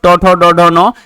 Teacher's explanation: ये आपका मुंह के ऊपर वाले छत के अगले भाग, जिसको मूर्धन्य बोले जाते हैं, ये सब मूर्धन्य व्यंजन कहलाते हैं।